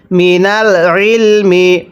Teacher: আইনটা উচ্চারণের সময় গলার মধ্যে চাপ দিয়ে পড়তে হবে।